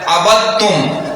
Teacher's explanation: اب دال کو تا میں مدغم کر دیا، کیوں کیا؟ پہلی شرط تو یہ ہے کہ ان میں دال جو ہے ساکن ہے اور اگلا حرف متحرک ہے۔ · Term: ادغام متجانسین